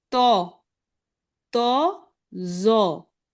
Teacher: कोई गोन्ना की आवाज नहीं आएगी, जो या तोई या जोई, इस तरह की आवाजें नहीं आएंगी, सीधा सिंपल तो, जो।